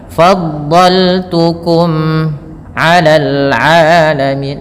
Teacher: mim mati bertemu ain, mimnya dijelaskan, ada lagi ketemu ain izhar syafawi, terus jelas 'alal 'alamin, mad tabi'i ya, ain jangan dibaca alamin, bedakan ain dengan hamzah.